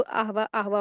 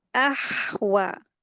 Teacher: हमजा में हा का मखरज को मिला के पढ़ेंगे।